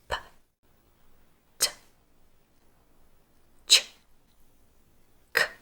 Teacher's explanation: Did you notice how your tongue moved further back each time?